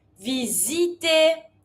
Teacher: S between 2 vowels, here as a Z sound